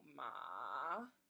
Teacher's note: The third tone is down and back up